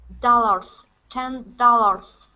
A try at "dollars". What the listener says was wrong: Okay, now the A at the end, the AR, instead of saying R's, dollars, okay, it's Use an ER sound, like you're saying her.